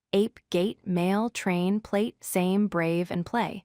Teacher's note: a diphthong, which means it is two sounds flowing together smoothly, not just one sound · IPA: eɪ, /eɪ/